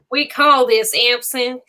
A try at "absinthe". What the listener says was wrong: She says synth. It's absinthe. She's adding syllables, but she adds syllables.